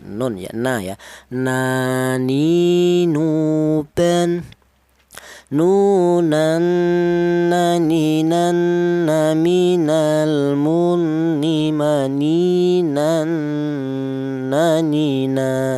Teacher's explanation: huruf berasal dari ujung Lidah menyentuh langit-langit mulut. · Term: huruf nun